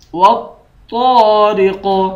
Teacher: قاف حروف قلقلہ میں سے بھی ہے اور موٹے حروف میں سے بھی ہے، اس کو قلقلہ کر کے بھی پڑھیں گے اور موٹا بھی پڑھیں گے